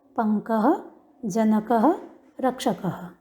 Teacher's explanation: तो आप देखेंगे विसर्ग से पूर्व में अ आए तो विसर्ग का उच्चारण हो जाएगा अह। हल्की सी हकार की ध्वनि के साथ बोलना है अह, कह।